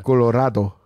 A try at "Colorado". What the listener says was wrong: That sounds like more Mexican than like Korean. Not enough H's. There's not enough H's. Just pretend that there's an H before and after every vowel, and you'll get the Korean.